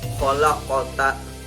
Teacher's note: Yaitu huruf yang memantul karena ada huruf qaf di tengah kata khalaqata, dan ini jika ada huruf qaf mati yang ada di tengah kata disebut dengan qalqalah sugro atau qalqalah kecil.